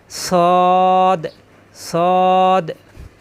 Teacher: সদ, সফিরের অক্ষর, জিহ্বা নিচের দাঁতে আগায় লাগিয়ে সদ সদ।